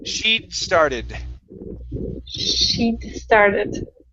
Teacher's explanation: you do not want to finish that d sound okay you're going to mix it with the s